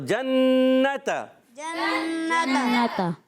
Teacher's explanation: अब देखिए यहाँ पर जीम पर ज़बर, नून पर ज़बर, ता पर ज़बर, ये हरकत है, इनको खींचना नहीं, मगर नून मुशद्दद आ गया। अब क्या होगा? एक अलिफ का गुन्ना करेंगे।